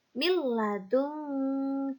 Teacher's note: maka dibaca dengan memasukkan huruf pertama ke huruf yang kedua tanpa disertai dengan dengung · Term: idgham bilagunnah